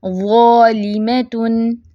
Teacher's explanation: ज़ा फैट है और ये भरपूर यानी कि आवाज़ भरी हुई भी होगी और मोटी भी होगी, क्योंकि इसमें सिफ़्ते इत्बाक भी है, आप पढ़ चुके हैं। · ज़ालिमतुन, बाकी हर्फ नहीं मोटे कर देना, ज़ालिमातुन नहीं, ऐसे नहीं पढ़ना, सिर्फ ज़ा मोटे, उसको ही मोटा रखेंगे